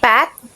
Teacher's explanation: Pat in the initial position and mop in the final position is a voiceless bilabial plosive.